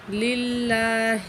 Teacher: تو یہ اللہ کی لام جو ہے اس کے اوپر کھڑی زبر ہے، ایک الف کے برابر کھینچ کے پڑھیں گے اس کو اور اللہ کو باریک کر کے پڑھیں گے